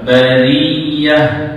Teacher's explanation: Ha di hujung tu ta marbutah. Dia jadi ha sebab kita wakafkan.